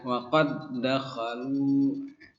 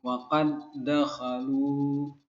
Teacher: Dal masukkan ke dal. Ini tidak boleh dipantulkan ya, tidak memantul.